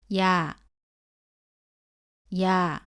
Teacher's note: 발음은 이에서 시작해서 빠르게 아로 이어서 발음합니다